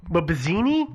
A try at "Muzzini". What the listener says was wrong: I think it's just Muzzini. The way I've heard it pronounced, the B seems to be silent.